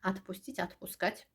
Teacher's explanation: Burada odur, amma a kimi tələffüz olunur, çünki vurğu düşmür.